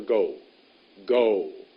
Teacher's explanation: when you say go there's a w at the end of that word